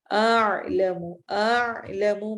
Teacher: اعلم میں پہلے حمزہ اور پھر عین پڑھا جائے گا. دونوں حروف حلقی ہیں لیکن دونوں حلق کے مختلف حصوں سے ادا ہوتے ہیں، اس لیے ان کا فرق رکھنا ہے.